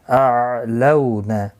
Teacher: لو واولین ہے، تھوڑا نرمی کے ساتھ کھینچ کر ادا کریں گے